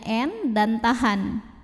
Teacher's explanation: Nun pertama dimasukkan atau dileburkan ke Nun kedua disertai bunyi dengungan jadi ini langsung fokus ke Nun kedua ya Min bunyinya n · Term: idgham bighunnah